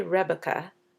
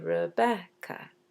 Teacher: That means we have one unstressed, and then it's followed by a stressed syllable. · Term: iam